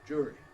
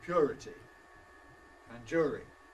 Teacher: an allophone of uː, just a special kind of uː that you use before r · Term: long ʊː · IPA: ˈʤʊːri